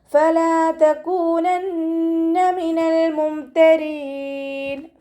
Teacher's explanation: മഖ്റജ് വരുന്നത് നമ്മുടെ മേലെ മുൻപല്ലിൻ്റെ അറ്റവും താഴെ ചുണ്ടിൻ്റെ ഉൾവശത്ത് നനഞ്ഞ ഭാഗവും ചേർന്നിട്ടാണ്. വെറ്റായ ഭാഗത്ത് വെച്ചിട്ട് ഉച്ചരിക്കുക കേട്ടോ.